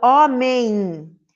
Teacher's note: esse m no final ele pode representar um fonema ele não representa fonema e ele representa exclusivamente uma vibração do nosso nariz · Tem o som do M, do E, e não tem o som do I aí no finalzinho? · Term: dígrafo vocálico